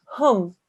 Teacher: The meme and the ha have to join. So both the ha and the meme will be sounded.